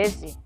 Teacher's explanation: E coa E final, pois igual. É un E lixeiramente máis pechado e máis próximo a un I.